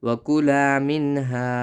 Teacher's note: لا، وکلا میم نون زیر من، ہا الف زبر ہا، منہا یہاں اخفا نہ کرے کیونکہ نون پر جزم ہے اور نون کے بعد ہا ہے